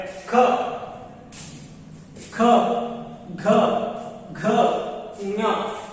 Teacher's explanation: ಈ ಅಕ್ಷರಗಳು ಗಂಟಲಿನ ಮೂಲಕ ಉತ್ಪತ್ತಿ ಆಗ್ತವೆ, ಆದ್ರೆ ಎಲ್ಲಿಯೂ ಕೂಡ ನಾಲಿಗೆ ಶೇಕ್ ಆಗುವುದಿಲ್ಲ. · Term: ಕಂಠ ಧ್ವನಿಗಳು